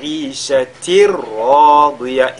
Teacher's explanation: Donc le tanwin fusionne totalement dans la lettre Ra. Donc ishatir radiya, et le Ra lui-même il est lu avec at-tafkhim Ra, radiya, de même que la lettre Dad qui le suit, radiya. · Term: al-idgham bila ghunna